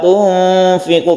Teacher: Wa ma tunfiqu kita samarkan karena ini namanya ikhfa hakiki, nun mati bertemu dengan fa. Tunfiqu ketika kita membaca nun kita bersiap membaca fa. Tunfiqu ini namanya ikhfa atau samar dan kita panjangkan.